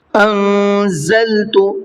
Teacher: وَآمِنُوا بِمَا أَنزَلْتُ مُصَدِّقًا لِمَا مَعَكُمْ، أَنزَلْتُ، ان کے اندر اخفا کریں گے اور زا کو ہارڈ کر کے پڑھیں گے